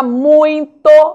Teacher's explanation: a palavra muito apresentam ditongo decrescente nasal apesar da ausência da marca de nazalização